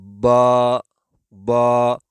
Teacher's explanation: یہ ہونٹ کے اندرونی حصے سے، ہونٹ کے 2 حصے ہوتے ہیں، ایک ہونٹ کا بیرونی باہر والا حصہ ہوتا ہے اور ایک ہونٹ کا اندرونی حصہ ہوتا ہے جو تر اور گیلا حصہ کہلاتا ہے۔ تو با دونوں ہونٹ جب مل جائیں گے اور اندرونی حصے ملیں گے، یعنی گیلے حصے، تر والے حصے جب آپس میں ملیں گے تو اس وقت یہ با ادا ہوگی